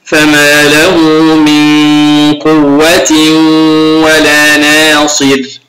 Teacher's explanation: هنا غنة لوقوع حرف القاف بعد النون ساكنة